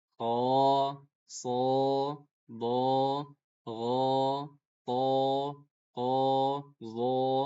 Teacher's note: Kalau dia hurufnya tebal berarti dibacanya bukan A, tapi O. Udah masuk jadi O, jadi tebal. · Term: alif mufakhkhamah